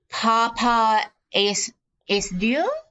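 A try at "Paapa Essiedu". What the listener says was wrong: I almost want to say his name is Pa'apa, like it's like there's like another extra syllable in there. Pa'apa or something like that.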